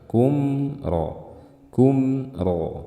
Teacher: dibaca dengan gunnah yang tidak panjang ya. Tetap ada gunnahnya, sama seperti izhar halqi, tetap ada gunnahnya tapi tidak boleh panjang. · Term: izhar syafawi